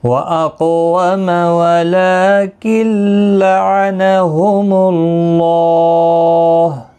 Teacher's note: وَأَقْوَمَ وَلَكِنْ لَعَنَهُمُ اللَّهُ وَأَقْوَمَ وَلَكِنْ یہاں پر بھی لام کے اوپر کھڑی زبر ہے، ایک الف کی مقدار کے برابر کھینچ کر پڑھیں گے. اور نون ساکن کے بعد یرملون کا لام ہے، ادغام ہوگا بغیر غنہ کے، غنہ نہیں کرنا ہے. لعنہم اللہ کسی بھی حرکت والے حرف کو کھینچنا نہیں، اللہ کا لام پر پڑھا جائے گا پیش کی وجہ سے، اس کے اوپر کھڑی زبر بھی ہے، ایک الف کی مقدار کے برابر کھینچ کر پڑھیں گے.